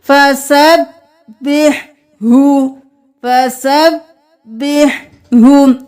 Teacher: ہا یہ گلے کے درمیان سے آواز ادا ہوگا، اور یہ جو ہا ہے یہ بھاری آواز میں ادا ہوگا۔